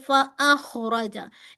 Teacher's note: इसके अंदर ख और र हैवी है। बाकी सारे लाइट है। फ अ खरजा र को हैवी लिखिए।